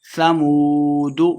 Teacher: واو مدہ ہے، 2 حرکات لمبا کرنا ہے